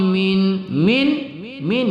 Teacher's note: nun sukun bertemu Kha kita baca tidak berdengung pada izhar halqi